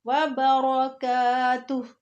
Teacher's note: लफ्ज़ रॉ आ रहा है और उसके ऊपर ज़बर है, फिर लफ्ज़ रॉ को मोटा करके पढ़ेंगे।